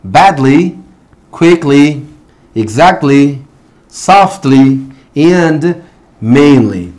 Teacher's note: cuando tengamos este tipo de sufijo en inglés, la y va a sonar como un long e sound